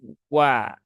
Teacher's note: monyong dulu ya monyong dulu kemudian baru ditarik ke belakang ketika akan memberikan harakat wa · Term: huruf wau